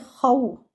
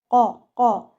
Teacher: Now moving on to the next word, which is قَوْلَكُمْ. Now here your Qaf is a letter without air, so do not mix the makhraj of Qaf with the letter Kha. Okay, don't read it like Khaw.